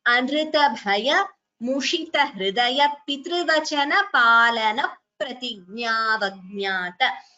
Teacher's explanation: Palana Pratignya Dvitvam here. So second P is heard before Pratignyavajnata.